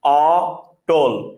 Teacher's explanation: অটল উচ্চারণ করার সময় আপনার মুখ বেশি খোলা থাকে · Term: বিবৃত